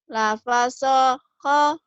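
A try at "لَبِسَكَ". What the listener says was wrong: Lapasaho. Lapasaho. Mana lapasaho? Lapasako. Ingat ko-nya jangan ho ya. Baju koko. Lafasako.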